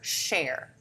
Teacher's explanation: The share for chair is just deaffrication because it's a fricative sound, so we're not stopping, but it's still not an affricate sound.